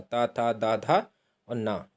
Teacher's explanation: दंत है आपका ता वर्ग पूरा, ता था दा धा और ना, ये आपके दंत्य वर्ग में है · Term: दंत्य वर्ण